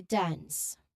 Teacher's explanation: an N sound and an S sound, a hissing sound at the end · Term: NS ending